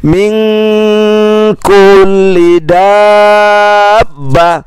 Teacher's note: Ada nun sukun bertemu dengan huruf kaf. Kaf tidak termasuk kelompok yang tidak dengung, maka nun sukun bertemu kaf dibaca dengung.